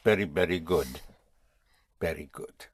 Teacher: important to know how to pronounce the V like a B.